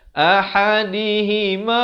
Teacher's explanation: Ni ha simpul, ha besar. Ha pedas saya bagi tahu makhraj di tengah kerongkong. Ha besar makhraj di bawah kerongkong.